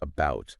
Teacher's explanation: the vowel sound is being raised before certain consonants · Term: Canadian raising